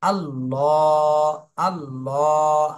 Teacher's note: খাড়া জবর রয়েছে মদের হরকত এজন্য এক আলিফ টান দিতে হবে তাহলে প্রথমে মোটা করে তারপরে এক আলিফ টান দিতে হবে